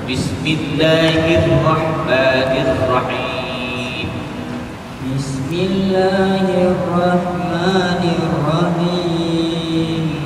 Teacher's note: alif lam bertemu dengan ra tu ya. Kena ada tekan sedikit.